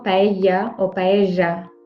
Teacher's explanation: Je le mets ici, le double L, parce que c'est un son différent. Le double L, ça fait J ou Y.